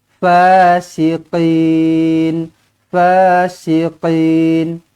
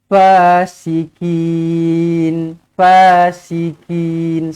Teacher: Tak sama kan bunyi dia kan? Qaf dia tebal sikit. Qaf dia tebal. Dia lagi dalam daripada kaf. Kalau kaf dia luar sikit. Tapi qaf dia dalam lagi.